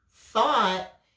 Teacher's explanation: If you said ought, thought, you were right. Is the TH a breath or a vibration? It's a breath.